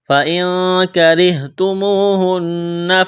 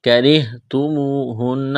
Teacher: فَإِن، یہاں اخفا کریں گے، نون ساکن کے بعد کاف ہے، کاف کو باریک کرنا ہے، را کو باریک کرنا ہے